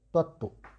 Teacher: তাহলে এই ত যুক্ত ত, তাহলে যুক্ত ব্যঞ্জন ভেঙে দাও, ত যুক্ত ত ভেঙে দিয়েছ, ভেঙে দিলে প্রথমটা ব্যঞ্জনান্ত এবং পরেরটা স্বরান্ত হয়, আর স্বর যদি অ থাকে সাধারণত সংবৃত হয় · যেহেতু তয়ে তয়ে যুক্ত ব্যঞ্জনের সঙ্গে ফলা যুক্ত আছে, তাই এই ফলা কিন্তু অনুচ্চারিত থাকবে